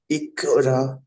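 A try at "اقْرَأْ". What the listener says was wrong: হুম, কফটা উচ্চারণ হচ্ছে না ঠিক। ইকরা।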